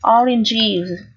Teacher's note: ES ở đây được phát âm là âm is. Is ký hiệu sẽ là chữ Y một la mã và Z.